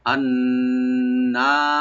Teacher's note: নুন মুসাদ্দাদ এখানে ওয়াজিব গুন্না করে একালে টানতে হবে